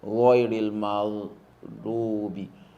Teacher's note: The do in maghdubi is pronounced by the left side of the tongue, not the tip of the tongue.